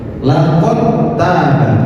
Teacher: Meskipun dal ini memiliki sifat qalqalah, tetapi itu seakan-akan dihilangkan dalnya. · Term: idgham